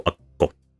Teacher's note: you are tensioning your mouth for the K during the first syllable, and then the second syllable is the release of the K and the second vowel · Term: gemination